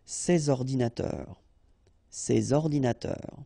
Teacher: you should make the liaison between s and o